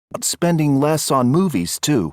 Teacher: Less on, you link less on.